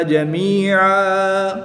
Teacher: وقف کی حالت میں 2 زبر کی تنوین کو الف مدہ سے بدل دیں گے